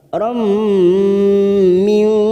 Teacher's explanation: Ayyu tiyani khairam, fathah tanwin pada huruf ro bertemu mim, idgham bi gunnah, siap masuk pada huruf mim, ditekan selama 3 harokat